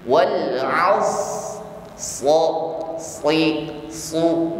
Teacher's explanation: Karena di sini kita sempurnakan terlebih dahulu sifat pada huruf shad, yakni sifat pada huruf shad di sini adalah rakhawah, jarayanul juz'i, jarayanul shawt, ya. Jadi suara huruf ini harus ngalir.